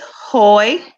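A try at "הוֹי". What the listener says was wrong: There you go. Good job. Good job.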